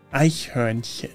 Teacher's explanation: English speakers often struggle with the CH sound, which in this case is very soft, almost like you're gently clearing your throat.